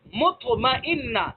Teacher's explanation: طا کو ادا کرتے وقت اوپر جو تالو ہے تالو سے چمٹ رہا ہے، مطمئنہ، جس کی وجہ سے یہ اور زیادہ پر ہو رہا ہے اور زیادہ موٹے ہو رہے ہیں. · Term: مطبقہ